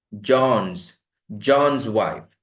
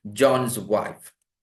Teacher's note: John, n, voiced sound. When you add that apostrophe s, that becomes z.